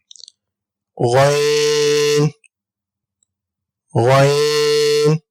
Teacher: حلق کے اوپر والے حصے سے ہم غین کو ادا کریں گے